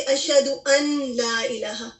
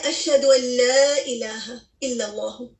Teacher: آپ دیکھیے اس میں کیا ہو رہا ہے, اشہد ان لا الہ, ٹھیک ہے نا. ان نون کے اوپر سکون آ رہا ہے اور اس کے بعد لام آ رہا ہے, تو ہم کیا کرتے ہیں, نون کو لام میں مرج کر دیتے ہیں